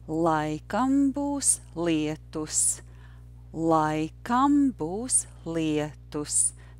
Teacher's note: So the rhythm is yes, no, no, yes, no. The word būs is not stressed.